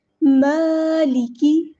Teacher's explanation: میم پہ کھڑا زبر ہے، ایک الف کے برابر لمبا کرنے، مد اصلی ہو رہی ہے، 2 حرکات یعنی 2 کاؤنٹس اس کو لمبا کرنا ہے۔ مالکی، لفظ ماں کا ہے اس کو ناک کے اندر سے نہیں نکالنا، ماں نہیں کرنا، ماں نہیں کرنا، ٹھیک ہے۔